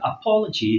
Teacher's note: so the stress falls on the word po